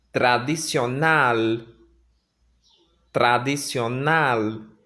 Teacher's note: o som desse L, ele termina com a língua enroladinha na boca.